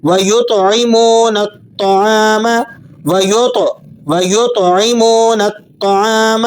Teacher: تو پر قلقلہ ادا کرتے ہوئے اسے ریپیٹنگ ساؤنڈ میں پڑھیں گے، حروف مستعلیہ میں سے ہونے کی وجہ سے آپ اسے موٹا بھی کر کے پڑھتے ہیں۔